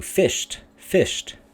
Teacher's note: if we make it into fished fished then it becomes a heavy syllable